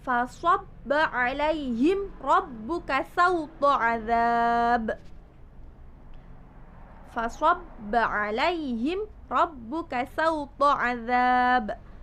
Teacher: Hukum yang pertama dalam bacaan ayat ini yaitu ada di lafadz alaihim rabbuka. Di situ ada mim sukun bertemu dengan huruf ro, dibaca jelas sebab itu adalah hukum idhar syafawi.